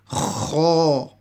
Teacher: Kha is also one of the throat letters, and its makhrij, the pronunciation, comes from the top of the throat, and it is also one of the full mouth letters, so it's pronounced heavy